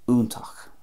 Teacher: I'm pronouncing that the Munster way there, úntach, a definite U sound